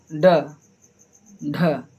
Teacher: जिन व्यंजनों को बोलते समय जिह्वा का अग्रभाग एक झटके के साथ नीचे गिरता है उन्हें उत्क्षिप्त व्यंजन कहते हैं।